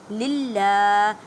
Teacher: اس ہا کو ادا کرتے وقت خیال رکھیں کہ حلق کے نیچے والے حصے سے ادا کریں